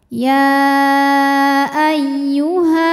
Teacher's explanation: Sebab ada alif yang sebelumnya berharokat fathah. Maka ha ini panjang kalau berhenti 2 harokat. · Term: mad tabi'i